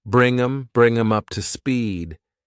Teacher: Do you have a sec to bring them? I can reduce the them by getting rid of the th, and I'm left with m, and I have to add it to the word before